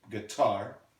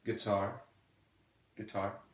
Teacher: the stress is on the second syllable here